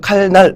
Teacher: 유음과 비음, 비음과 유음이 만날 때 비음이 유음으로 바뀌었어요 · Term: 유음화